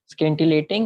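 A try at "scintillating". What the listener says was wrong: स्किंटिलेटिंग नहीं है, वर्ड की बैंड ही बजा देगा, सिंटिलेटिंग है, सी साइलेंट।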